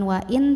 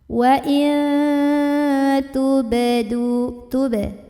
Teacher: maka nun sukunnya dibunyikan samar-samar mau bilang ta. Jadi bukan wa'in tapi wa'il mau bilang ta ya sambil ada dengungannya. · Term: ikhfa